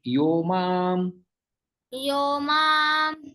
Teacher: विसर्ग का ओ में परिवर्तन हो जाता है